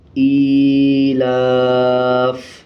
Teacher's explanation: حمزہ کھڑا زیر ای، لام کھڑا زبر لا، ایلا، فا زیر فی، ایلافی، وقف ایلاف۔ فا کے نیچے والا زیر سائلنٹ کر دیں گے اور فا کی آواز کو آدھا پڑھیں گے